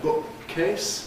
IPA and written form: ˈbʊʔk̚keɪs (bookcase)